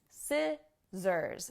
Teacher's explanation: when we say it is scissors not scissors scissors notice that we have the s sound for the first s and c and a z sound for the next two s's